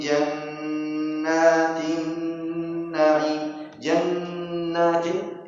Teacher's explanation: jannatin ini juga dua harakat untuk ghunah nun tasdid